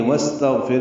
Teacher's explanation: سین ساکن پہ ہمس ہوگا